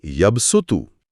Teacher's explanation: یہاں صاد کی بجائے صاف سا کی آواز پڑھی جائے گی